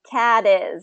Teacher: is and that becomes a D that T you kind of becomes a D because there's vowels on each side